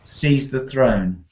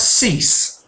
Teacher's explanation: Now, that's not actually a homophone because um there's a difference, isn't there? Sees has a Z sound at the end and cease has an S.